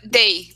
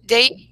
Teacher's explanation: esse th aqui tem um som de D